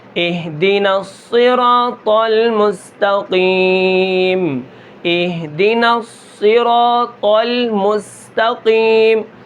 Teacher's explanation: اب جو صاد کی سیٹی ہے یہ اس سے کم ہوگی، جیسے اہدنا اہدنا الصراط المستقیم، اہدنا الصراط المستقیم، اب صاد کی جو سیٹی ہوگی یہ تھوڑی کم ہوگی